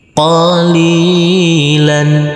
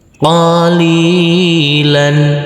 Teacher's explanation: huruf lam yang berfathah tanwin ini kita kasih akhiran huruf n.